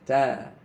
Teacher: huruf ta sama dengan dal letaknya. Ya, di belakang gusi.